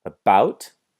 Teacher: beginning with the schwa, and then we have the ow noise